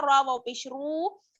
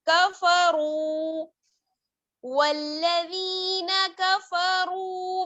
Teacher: والذین کفروا، کاف زبر کا، فا زبر فا، کفا، را واو پیش رو، را کو کھینچیں گے کیونکہ را میں واو مدہ ہے